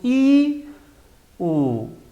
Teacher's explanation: en la I la lengua va adelante y en la U retrocede. O sea que acá está la I y acá está la U.